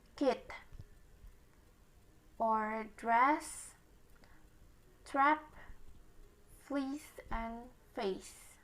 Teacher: front vowels defining characteristic being that the highest point of the tongue is positioned relatively in the front of the mouth